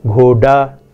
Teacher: the voiced retroflex plosive d pronounced as a r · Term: flapping